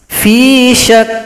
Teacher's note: huruf syin ke huruf Kaf berikan sifat pada huruf Kaf nanti ada sifat Hamas ada bunyi nafas atau bunyi angin